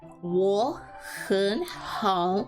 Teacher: all use this third tone down and up